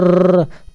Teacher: र प्रकंपित, जैसे जब इंसान कांपता है तो र करता है ना